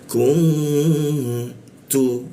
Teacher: N-nya itu berubah menjadi eng · Ku masuk ke nun, nun mati berwarna hijau, artinya apa? N itu berubah menjadi eng. Nah engnya kita tahan dua ketukan di mana, di ca-nya, dengungnya di ca dia.